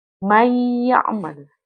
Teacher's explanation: nunnya itu hilang. Jadi ditasydidkan ke huruf ya. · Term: idgham